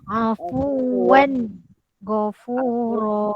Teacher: Jangan dengung afuwan, tak boleh.